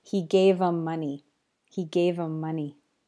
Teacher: The h sound often disappears in these common English words, the pronouns he, his, him, and her